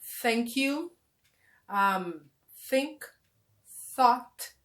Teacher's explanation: the sound of kind of s but with the tongue out of your mouth